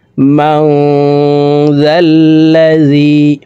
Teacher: নুন সাকিনের পরে ইকফার হরফ জাল আসছে, এই কারণে এই নুন সাকিনকে নাকের ভিতরে লুকাইয়া গুন্নার সহিত পড়ব। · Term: ইকফাহ গুন্না